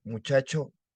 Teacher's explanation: la tendencia hacia la realización fricativa